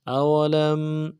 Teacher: سے ادا کرنا ہے، واو کو نرم سے ادا کریں گے، لام کو میم ساکن کے ساتھ ملانا ہے، میم ساکن میں غنہ کریں گے